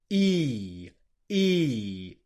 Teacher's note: It's not a short vowel sound, which is what your native language almost certainly has. It's a long vowel sound that lasts. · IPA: /i:/